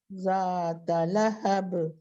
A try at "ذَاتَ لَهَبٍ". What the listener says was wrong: ہاں تا کو لمبا نہیں کرنا. ذات لہب.